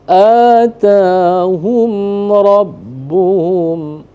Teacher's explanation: Nah, di sini mim mati bertemu dengan ra, maka hukumnya izhar syafawi. Artinya dibaca jelas.